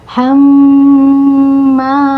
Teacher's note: sini ee mim tasid itu mim gunah terus ada dengungan ya dengungannya harus sampai ke rongga hidung ya Nah bisa ditahan dengungannya itu dua harakat atau lebih ya Bisa